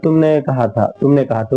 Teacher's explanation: بولتے ہوئے کوئی غنہ نہیں ہوتا ہے، بالکل ظاہر کر کے ہم پڑھتے ہیں۔ تو بالکل ظاہر کر کے ہم کہتے ہیں۔